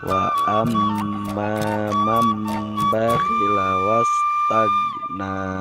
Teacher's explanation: Iqlab dibaca dengan merapatkan bibir atas dengan bibir bawah serta diiringi dengan suara dengung selama kurang lebih dua ketukan. · Karena nun mati bertemu dengan huruf ba, maka nun sukun diganti menjadi mim sukun dan dibaca dengung